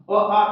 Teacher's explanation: अ का उच्चारण स्थान कंठ